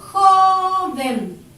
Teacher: Se carga la voz aquí, sobre la O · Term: acento prosódico